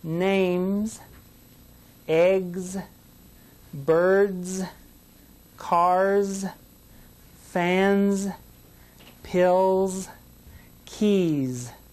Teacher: feel a vibration in your hand from your throat that's because all of the ending sounds for these words are voiced sounds · It doesn't make the S sound. Listen as I say these words for the Z sound because of the voiced ending.